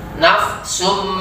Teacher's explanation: Jadi nun dari nun ke mim, berubah jadi mim dia. Nafsun menjadi nafsum, dan diikuti dengung, itu Pak ya. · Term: iklab